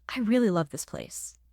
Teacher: Strong stress on really and the core verb love.